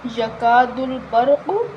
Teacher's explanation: را ساکن زبر کی وجہ سے پر پڑھیں گے، قاف حروف مستعلیہ ہے، موٹی پڑھیں گے